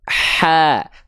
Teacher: Ya, hak kecil dilafalkan dari sini dan dia sama-sama mengalirkan nafas, tapi karakteristiknya berbisik